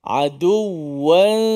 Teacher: hujung lidah kita tidak mencecah makhraj nun itu. Aduwan, tapi kita baca aduwansha. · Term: ikhfa hakiki